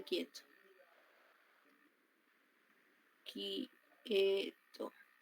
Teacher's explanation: que se suene que se represente como K del sonido quieto no está sonando la u por eso solo Suena la k